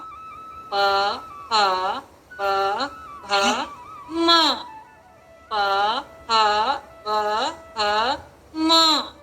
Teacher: हमारे दोनों ओठ मिलते हैं तब ये शब्द बोले जाते हैं। प फ ब भ म, इनको नाम दिए ओष्ठ।